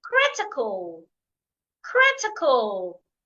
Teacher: I am stressing the first syllable